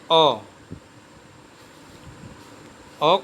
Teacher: फिर मध्य स्वर, जिनका उच्चारण जिह्वा के मध्य भाग से, जैसे अ का उच्चारण जिह्वा के मध्य भाग से होता है, इसलिए यह मध्य स्वर कहा जाएगा